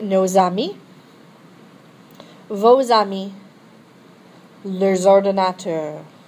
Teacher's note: So again, all that's talking about is because these plural forms end in an S, okay, you're going to hear that S as a Z when you have a word, a noun that begins with a vowel or a silent H